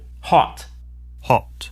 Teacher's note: the American O sound is an unrounded vowel, ah, while the British O sound is rounded, aw.